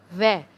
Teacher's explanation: व और फे, दांत और जो हमारे होठ होते हैं दोनों को मिलाकर बोलते हैं। आप बोल के देखिए, व, आपके ऊपर के दांत आपके नीचे वाले होठ पर टच होंगे तो ये होगा व दंतोष्ठ, और फे, व और फे दंतोष्ठ होता है, ठीक है।